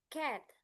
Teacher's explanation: the vowel a sounds is steady